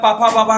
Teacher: जब ओठ से ओठ आपस में मिले सर पापा बाबा का उच्चारण स्थान स्पष्ट होगा। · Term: ओष्ठ